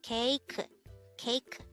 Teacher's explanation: This is pronounced as a three-syllable word. The first syllable is ke, second syllable is I, and the third syllable is ke.